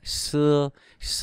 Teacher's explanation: đọc là xưa không có bật hơi gì hết á